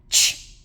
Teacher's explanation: where we hear the small amount of fricated air, ch, then the stop and the burst of air at the end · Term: affricate